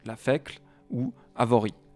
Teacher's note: Une autre bonne prononciation, qui était recommandée d'ailleurs par Gaston Thorillon, ce serait tout simplement de transformer les voyelles atones en schwa français, en E atone français, donc la fécle ou Avori.